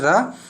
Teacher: तो इसमें जो आपका होता है रा, जो रा होता है वो आपका होता है, एक तो वो वर्ष होता है, लुंठित होता है, सघोष होता है और अल्प प्राण भी होता है